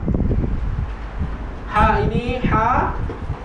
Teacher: Tapi ha pedas ni kalau ikutkan kenapa kita sebut pedas? Sebab ha yang ini hanya sifat hamas dia banyak, sifat angin dia banyak. Ha keluarkan angin yang banyak